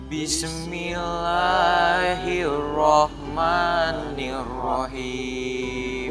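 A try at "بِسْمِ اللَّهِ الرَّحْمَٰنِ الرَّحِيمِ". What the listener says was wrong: Udah oke nih ya.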